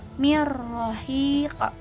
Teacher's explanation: Cara bacanya tuh meleburkan huruf nun ke huruf kedua sehingga dilafalkan dengan huruf kedua di tasydid